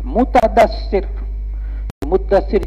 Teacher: تا کو دال بنایا، دال کا دال میں ادغام کیا